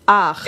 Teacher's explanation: Yeah, it's like you're making the vowel ah. Yeah, make the vowel ah. And then you're doing the ch.